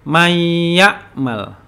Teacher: Nun masuk ke dalam huruf ya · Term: idgham